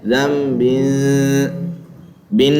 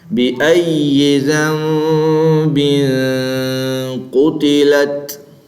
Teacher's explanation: اخفا میں نون واضح نہیں ہوتا اور نون کی آواز کو چھپایا جاتا ہے